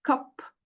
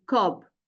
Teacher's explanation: the p is voiceless and the b is voiced